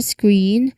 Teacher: it's a direct, tight blend from S to the K to the R. · the K sound here is also unaspirated because it's after an S, okay? So, it's a direct, let's say, screen C. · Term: SKR cluster